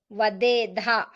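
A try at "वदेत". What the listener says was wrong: ఒత్తు కాదు చిన్నత ఓకే చిన్నత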